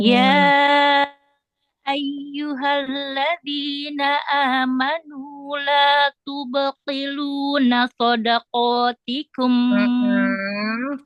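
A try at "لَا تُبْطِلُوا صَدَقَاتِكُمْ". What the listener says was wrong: Hati-hati, hati-hati. Tidak ada nunnya ya. ini kan nafi. Nafi. Nahi.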